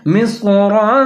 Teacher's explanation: میم زیر کے بعد سواد ساکن ہے، ملا کے پڑھیں گے، سواد کو موٹا کر کے پڑھیں گے.